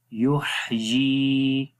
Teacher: یا کے نیچے کھڑی زیر ہے، اس کو ایک سیکنڈ لمبا کریں گے.